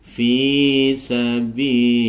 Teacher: Lillah ini juga dibaca lafzul jalalah tarkik atau tipis